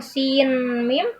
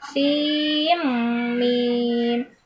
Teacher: Nah, jadi ketika ada sin bertemu dengan mim, nah ada nun sukun bertemu dengan huruf ma, huruf mim, maka dia diidghamkan seperti kita membaca Al-Qur'an biasa. Diidghamkan menjadi idgham bi gunnah. Jadi bukan sin mim tapi sim mim.